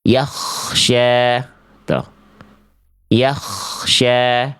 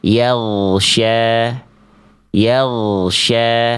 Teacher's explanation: ketika teman-teman melafalkan ghain sukun, kalau masih kerasa ada angin keluar, itu pasti jadi huruf kho.